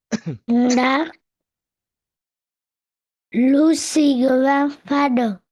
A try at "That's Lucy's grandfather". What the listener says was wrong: The S? Lucy's. Lucy's. Okay, so don't forget to pronounce the S.